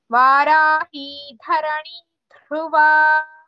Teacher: both धरणी धा and ध्रुवा धा both are महाप्राणास